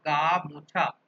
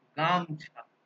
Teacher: গা মোছার জিনিস যেটা, সেটাকেই আমরা বলছি গামছা। তাহলে মোছার ময় ওকার যেটা, সেটা পাল্টে যাচ্ছে, মানে লোপ পেয়ে যাচ্ছে। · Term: স্বরধ্বনির লোপ